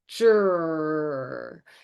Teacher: my lip position does not even change with the R. My lips are not rounded. They are protruded forward.